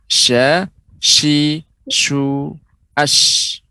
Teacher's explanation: tafasyinya itu menyebarnya udara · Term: huruf shin